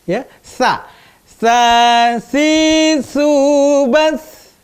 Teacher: Ujung lidahnya di antara dua gigi, jangan digigit, ya, jangan digigit. Sa ditempatkan di ujung dua gigi, ya.